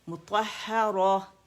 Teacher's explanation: تائے مربوطہ وہ ہا ساکن میں بدل جاتی ہے